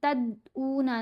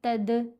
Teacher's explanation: ہم تد اونا نہیں پڑھیں گے، تد، دال کی آواز ہلنی چاہیے، ایکو آواز بنتی ہے، آواز پلٹ کر واپس آتی ہے۔ یہاں بھی دال کے اوپر ہم قلقلہ کریں گے اور یہاں بھی۔